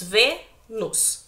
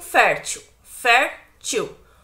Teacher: Então, Vênus e fértil é uma paroxítona, porque a penúltima sílaba das duas palavras é a mais forte.